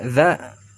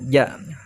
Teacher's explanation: Za sama ja. Perbedaannya adalah zal itu digigit lidahnya sedikit ya, untuk lebih membedakan lagi antara zal sama jim.